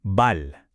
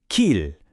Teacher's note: palaging mayroon siyang malambot at parang dumadaloy na L sound. Parang L sa salitang ball. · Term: soft L